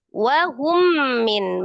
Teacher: Ya. Wahum min, mim sukun ketemu dengan mim. Idgham mimi atau idgham mutamasilain